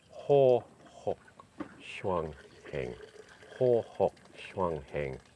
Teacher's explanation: So the tone rises and falls, and it sounds good when it's pronounced properly in Chinese.